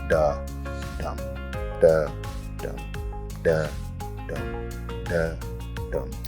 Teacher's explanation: the da is like the unstressed syllable, and the dum is like the stressed syllable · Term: iambic pentameter